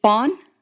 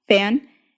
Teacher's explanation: When you say fawn, your tongue is low and far back in your mouth, and when you say fan, your tongue moves forward. The Japanese vowel A is around halfway between those two.